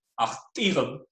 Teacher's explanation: If we add a plural suffix to that word, which introduces tone, we get a prosodic reorganization and you get achtich, with tone and stress on the penult corresponding to trochaic footing